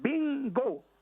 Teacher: That N at the end of the Spanish word sounds eng. It is written in the phonetic symbol like an N with a little tail like a J curving towards the left.